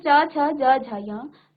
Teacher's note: च वर्ग का उच्चारण करते समय आपकी जीभ आपके मुख के अंदर तालु स्थान पर जो है क्या करती है? स्पर्श करती है।